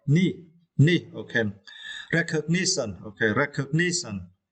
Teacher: for this word, you need to stress the third syllable